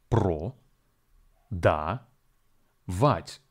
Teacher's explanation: English the word pradavat has three syllables Pro da vit and the stress falls on the last syllable